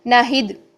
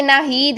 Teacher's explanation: ही 2 हरकत लंबा करके बोलेंगे तो वो नाम से ही बोला जाएगा। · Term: या मद्दा